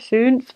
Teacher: that sound ooh with like an e on the inside and like an O on the outside